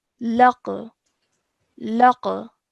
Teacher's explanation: I am bouncing off the sound of the qaf and producing a slight jerk sound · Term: qalqala